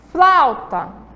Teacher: o som do A sobressaiu. Então o som mais forte é no A e vai descer aí, decrescer aí para o U. Flauta. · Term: decrescente